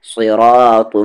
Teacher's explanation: صاد کو ہیوی کرتے ہوئے، را کو بھی ہیوی کرتے ہوئے، اور یہ طا بھی ہیوی ہے